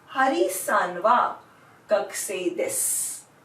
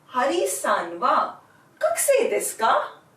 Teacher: I will end the sentence in rising intonation if it were a question.